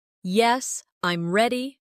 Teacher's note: Now say, Yes, I'm ready. with a falling tone.